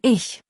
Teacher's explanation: Und für CH nach vorne, wie in Ich, ist es ein weicher Hauch, kein hartes K. Also nicht IK, sondern ich.